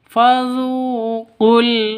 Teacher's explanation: Qala fazuqu, awalnya panjang ini karena bertemu dengan alif lam, maka yang waw dan alifnya ini tidak dianggap, langsung masuk ke lam mati, lam sukun